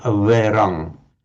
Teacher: it was probably pronounced something like averang, not a full v, but averang.